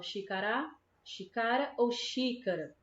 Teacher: Olha como a gente pronuncia as outras sílabas mais rápido, né? E essa sílaba xi, que é a antepenúltima, a gente puxa mais, tá vendo?